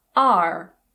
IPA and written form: ɑːr (are)